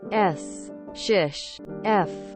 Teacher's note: the lengthening of fricative sounds